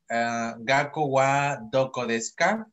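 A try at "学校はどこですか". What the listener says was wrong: Ok, vuelve a leer la primera palabra. Concéntrate en doble consonante y vocal larga. Gakko wa doko desu ka, ¿no? Porque tenemos la O ahí. La O larga porque está la U. Gakko wa doko desu ka?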